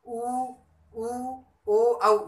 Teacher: होठों की जो आकृति, होठों की जो आकृति बनती है वो गोल बनती है। वर्त का आकार होता है। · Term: वर्तमुखी स्वर